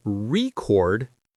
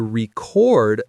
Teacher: If I say, I want to buy a vinyl record, the stress is on the first syllable. It's a noun. · if I say, I need to record this podcast, the stress is on the second syllable.